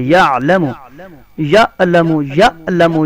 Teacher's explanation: یہ حمزہ نہیں ہے، یہ عین ہے. عین گلے کے درمیان صدا ہوتا ہے